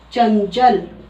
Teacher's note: जब बीच में लगा हो अनुस्वार तब हम उसको न की तरह बोलेंगे।